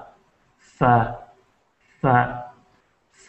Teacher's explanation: فا فا فا میں جو ہے ہمارا جو نچلا ہونٹ ہے یہ فا، یہ ثنائے علیہ سے اوپر کے دانتوں سے ٹکراتا ہے اور ایک اس کی آواز نکلتی ہے تھوڑی سی، لیکن زیادہ زور سے پھنکار کی جو آواز ہے وہ نہیں نکلتی، نارملی نرمی کے ساتھ یہ ادا ہوتا ہے. کچھ لوگ جو ہے بہت زیادہ فا پہ فا اس طرح کی کوئی وہ دے دیتے ہیں زور، لیکن اس طرح نہیں.